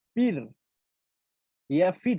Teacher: প্রথমটা যখন আমরা উচ্চারণ করতেছি ফির, ফির, তখন কি রয়ের পূর্বে আমার কি আসতেছে? জের আসতেছে। তো তখন আমরা পাতলা করতেছি।